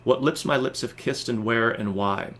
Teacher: five groups of an unstressed + stressed syllable together